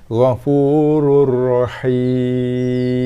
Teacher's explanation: ghafurur, tekan pada ra dan lepaskan dengan barisnya tanpa dengung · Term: idgham bila gunnah